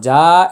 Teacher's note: জিম আলিফ জবর যা, এটা হচ্ছে 4 আলিফ টান।